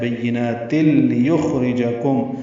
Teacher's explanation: تنوین کے بعد لام آنے کی وجہ سے تل میں ادغام کامل ہے · کی وجہ سے تل میں ادغام کامل ہے، بینات تل یخرجکم، لام کو باریک اور جلدی ادا کریں گے